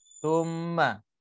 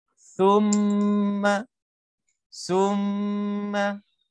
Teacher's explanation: Jadi kalau tak keluar lidah dia akan jadi summa.